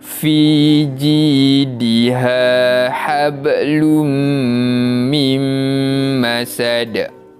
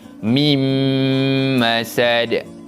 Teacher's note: kita memasukkan bunyi bacaan nun mati kepada huruf selepasnya iaitu huruf mim dan dibaca dengan bacaan dengung. Jadi mim masad. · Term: idgham bi gunnah